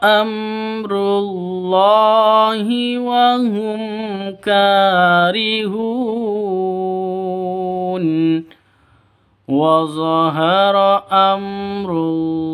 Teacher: Amrullah mim mati bertemu dengan ro jelas terang izhar syafawi